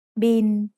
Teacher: It's the word bill, but we read it in Thai as bin. Thai doesn't naturally have the L sound at the end of a syllable, so it changes to sound like the letter N. บอใบไม้ สระอีลอลิง บิน Now, let's quickly review the vowel pair that we learned in the last lesson.